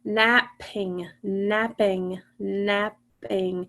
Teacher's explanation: When you say that word, napping, you don't hear the P twice. You only hear it one time.